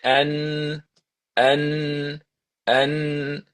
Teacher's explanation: If you say and and you will notice the sound gets blocked. There's no more sound coming from your mouth. It's coming from your nose. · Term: n clear